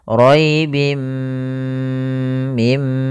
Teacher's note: memasukkan tanwinnya ke mim dan ditahan gunnahnya. Roibim mim, panjangkan dulu, tahan gunnahnya 2 harokat. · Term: idgham bi gunnah